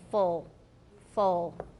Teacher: again oh it turns almost into a dark L like full if you make a very very back ooh you'll get a dark L as in full full with no alveolar contact